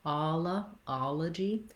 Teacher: our second letter O is vowel schwa. That sounds like That's because this first O is stressed, second one is unstressed.